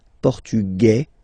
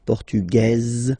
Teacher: masculine portug you don't pronounce the S feminine form portuges you pronounce this Z sound